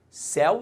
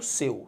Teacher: Repare que em céu, o el é aberto. E quando eu falo seu, ao contrário, o el é fechado. Então, eu de seu e el de céu.